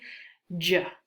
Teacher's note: how it starts as the letter D, but instead of releasing in a D, a puff of air, the air is released slowly